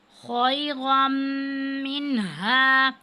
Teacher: رو پر جب زبر ہو یا دو زبر ہو تو اس کو ہم موٹا کر کے پڑھتے ہیں، پر کر کے پڑھتے ہیں، اور جب تنوین کے بعد یا نون ساکن کے بعد میم آ جائے تو یہ حروف یرملون میں سے ہے، تو یہاں پہ ہم ادغام کی صورت میں غنہ کرتے ہیں خیرا منہا.